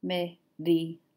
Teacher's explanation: the R makes more of a D sound